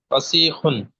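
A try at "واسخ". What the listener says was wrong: ওয়াসিখুন, টান হবে না, হ্যাঁ, ওয়াসিখুন।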